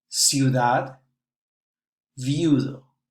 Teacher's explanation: According to what kind of vowel you put together, the stress and the diphthong will change. If 2 close vowels are together, they are pronounced as one syllable. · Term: diphthongo